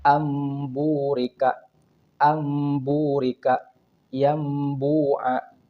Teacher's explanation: jadi ketika kita menghadapi Nun sukun atau tanwin dengan huruf ba maka itu bacanya adalah mengganti bunyi Nun sukunnya menjadi mim sukun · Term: iqlab